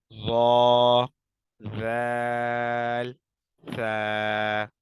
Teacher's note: سرا، سرا یہ نوک سے تھوڑا سا اوپر کا حصہ ہے، ٹھیک ہے۔ زبان کا سرا اور اوپر کے دانتوں کے اندرونی کنارے سے ادا ہوتے ہیں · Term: حروف لثویہ